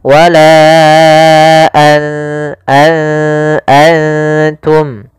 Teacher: Maka apabila ada nun sukun atau dia huruf yang tanwin an, in un, karena tanwin dan nun sukun itu sama bunyinya kedua-duanya adalah bunyi n. Maka ketika bertemu ta nunnya disamarkan ke huruf ta an langsung kepada makhraj daripada makhraj huruf ta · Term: ikhfa